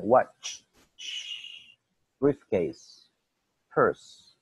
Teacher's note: Si se fijan, aire saliendo de la boca. Ya no es tanto ni vibración ni explosión.